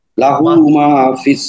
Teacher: মাতে এক আলিফ টান আছে